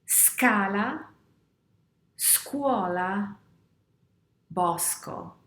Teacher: What happens when we combine SC with the vowels A, O, U? Well, the sound is a hard sound. It's a sk sound.